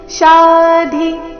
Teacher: ಶಾ ದೀರ್ಘ ಧಿ ಮಹಾಪ್ರಾಣ ರಸ್ವ